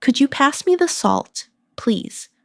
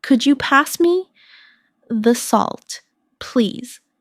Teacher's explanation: my voice rises on, Could you, and falls gently at the end